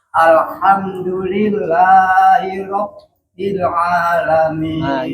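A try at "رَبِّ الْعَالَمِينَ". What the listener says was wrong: Jangan terlalu ditahan. Rabbil, tapi langsung.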